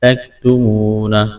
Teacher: واو مدہ ہے، ایک الف کے برابر کھینچنا ہے، وقف کریں گے، ہا کو ساکن کریں گے۔